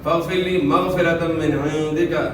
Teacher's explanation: فاغفر لی غین کو موٹا ادا کرنا ہے, را ساکن سے پہلے زیر را کو باریک ادا کرنا ہے